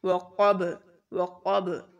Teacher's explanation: تو اس کو ساکن کر دیں گے اور پھر پڑھیں گے. اور یہاں پر با کے اوپر جب جزم آ جائے گی تو یہاں پر قلقلہ کریں گے